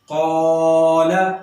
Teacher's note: قاف حروف مستعلیہ میں سے ہے، لہذا اس وجہ سے الف کو بھی ہم نے پر کر دینا ہے یعنی موٹا کر دینا ہے۔